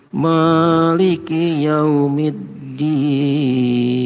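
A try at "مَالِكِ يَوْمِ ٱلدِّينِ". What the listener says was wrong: Baik, maknya kepanjangan Pak. Maliki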